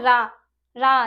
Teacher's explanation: रा जिसमें जीभ हमारी कंपन करती है। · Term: प्रकंपित